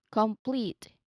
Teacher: So it's not a hard stop before the P, but here it's a smooth transition from the vowel of the first syllable into that PL blend that kicks off the next part of the word. That's why yes, PL essentially starts the second syllable.